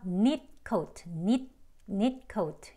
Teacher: 이렇게 이어질 때는요. 그냥 트 소리가 안 들려요.